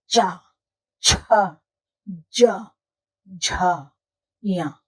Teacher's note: सभी में तालू और जिवा का प्रयोग होता है मतलब जीव और तालू का प्रयोग होता है ये तालव्य व्यंजन